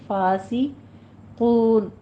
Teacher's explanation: سین کی آواز سیٹی کے ساتھ باریک ہو جائے گی